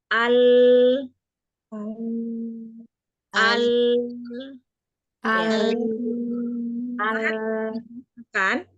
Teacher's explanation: saat pengucapan lam sukun itu ada suara ke depan yang tertahan oleh ujung lidah